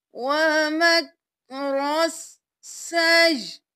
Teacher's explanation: یہاں پہ ہم نے یا کو حمزہ کے ساتھ ملایا اور حمزہ کو ساکن کر دیا، ہم نے سجی نہیں کرنا، سین زبر یا سی یا زیر حمزہ ی، سجی تھا تو وقف کیا تو حمزہ ساکن ہو گیا سجی، یہاں پہ یا کو ہم بالکل نہیں پڑھیں گے۔